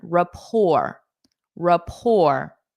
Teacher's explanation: we adopt French pronunciation for this. So we say rapport, pour. Notice the T is silent. Rapport, rapport.